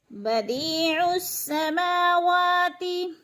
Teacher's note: मा और वा इधर खड़ी ज़बर है, खड़ी ज़बर को एक अलिफ के बराबर खींच कर पढ़ना है